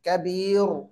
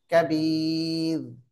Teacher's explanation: இந்த ரா தர்கீக் மெல்லினமா சொல்லணும். கபீர் அப்படின்னு வல்லினமா சொல்லக்கூடாது.